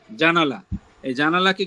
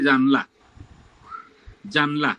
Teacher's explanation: একটা স্বরবর্ণ বাদ দিয়ে দিচ্ছি আমরা উচ্চারণের সুবিধাতে অথবা দ্রুত উচ্চারণ করতে গিয়ে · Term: স্বর লোপ